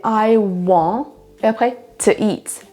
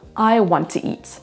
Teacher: Le T du premier mot va entre guillemets disparaître et on va seulement dire le deuxième.